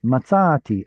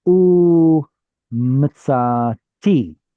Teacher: So there's a change in the stress from the tzadi to the tav. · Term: stress change